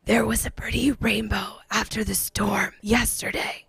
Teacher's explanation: air is escaping through the vocal cords those vocal cords aren't coming together correctly because there may be paralysis of one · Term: weakened vocal fold